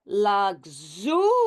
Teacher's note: the stress moves now from luxury to luxurious. So it moves to the second syllable and now the vowel over here it's it's an open syllable.